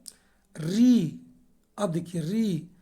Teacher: जब री बोलेंगे तो आपको जो जीभ का अगला भाग है वो सक्रिय होता है, तो री का कहेगा आपको अग्र स्वर कहेगा।